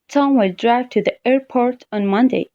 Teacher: Now the question is, where will Tom go on Monday? So naturally, the stress will be on the word airport.